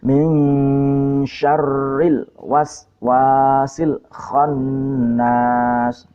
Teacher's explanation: Jadi yang benar min syarr ra-nya ditasdid, syarr ini shin ya, bukan sin. Syarril nah, ini pendek, yang ini wawunya agak panjang.